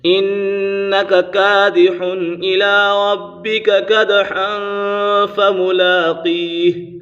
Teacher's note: انک کادح الی ربک کدحا فملاقیہ، دال کے اوپر قلقلہ ہو رہا ہے